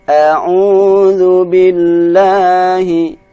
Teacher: A'udzu 2 harokat. Jangan sampai dibaca 3 harokat.